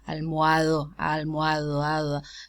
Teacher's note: It's realized as a fricative because it occurs between vowels.